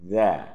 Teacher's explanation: Za ini makhrajnya ujung lidah dengan ujung gigi. Ujung lidah dengan ujung gigi yang di atas.